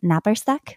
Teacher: it has the rolled r it has a consonant cluster